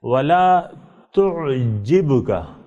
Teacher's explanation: بے اچٹتی ہوئی آواز سے آنی چاہیے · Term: حروف قلقلہ